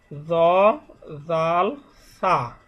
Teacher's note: জিহ্বার আগা সামনের উপরের 2 দাঁতের আগার সঙ্গে লাগাইয়া জ জাল সা। 11টা হলো দাঁতের গোড়া, যে দাঁতের গোড়ার সঙ্গে তদালতা, ঠিক ওই 2 দাঁতের আগার সঙ্গে জিহ্বার আগাকে স্পর্শ করিয়া জ জাল সা এটা উচ্চারিত হবে।